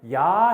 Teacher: 야 하면 입이 벌어지죠. 입이 벌어진다는 것은 턱이 떨어져요. 턱이 떨어지면 혀가 아래로 내려가요. 혀의 위치에 변화가 있죠. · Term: 이중모음